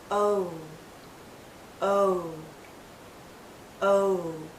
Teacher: as we come to the end of this vowel sound, our lips become even tighter. It finishes actually with a slight oo sound. O. Do you see how my lips start larger and then pull in to a tighter circle?